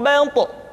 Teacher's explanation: dalam posisi sukun, to memiliki sifat qalqalah, sehingga suaranya mesti terdengar mantul.